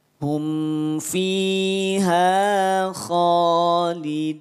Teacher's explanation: Fi 2 harokat, ha 2 harokat, kha 2 harokat. Tiga-tiganya adalah mad asli atau mad tabi'i. Ya, murni 2 harokat.